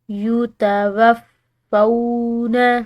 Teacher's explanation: فا کے بعد واو ساکن آ رہی ہے تو ایک الف کی مقدار اس کو کھینچ کر ادا کریں گے